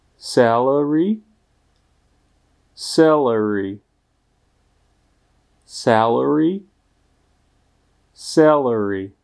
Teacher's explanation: abyste u slova salary nevyslovili první samohlásku jako české E. Musí se opravdu jednat o E, tedy o jakousi kombinaci Ačka a Ečka. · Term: otevřeného E